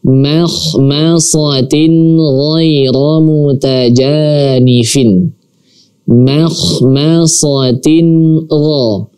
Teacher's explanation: Makhmasatin gha. Nah, di sini ada tanwin bertemu dengan huruf ghain. Maka tanwin di sini kita baca secara jelas. Jangan didengungkan.